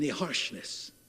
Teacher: I hit that sh and the S at the end of the word